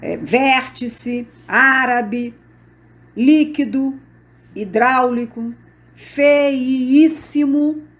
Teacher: a sílaba forte recai na antepenúltima sílaba toda estão acentuadas como exemplo vértice árabe líquido hidráulico feíssimo outros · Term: proparoxítonas